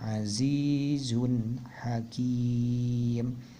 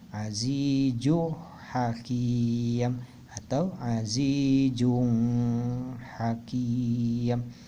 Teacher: jelas pelafalan tanwinnya ya, dan tidak dengung atau tidak gunah ya. Nah, jadi pelafalannya, cara bacanya azizun hakim, tidak azizu hakim atau azijung hakim atau azizun hakim, tidak dengung ya, atau tidak gunah. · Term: hukum izhar